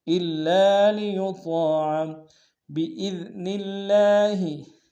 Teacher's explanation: من رسول الا لیطاع، الا لیطاع، حمزہ کو لام کے سامنے لائیں گے، لام کے اوپر تشدید زور دیں گے، لام کے سالف مدہ ایک امتداد میں کھینچیں گے، یطاع میں طاء کے سالف مدہ ہے ایک امتداد میں کھینچیں گے، طاء کو موٹا ادا کریں گے